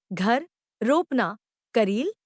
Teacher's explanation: हिंदी में र ध्वनि सघोष अल्पप्राण